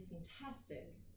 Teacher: En anglais, quand on dit « fantastic », tout le monde entend bien qu'il y a une syllabe qu'on entend plus que les autres. C'est la deuxième syllabe. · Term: syllabe accentuée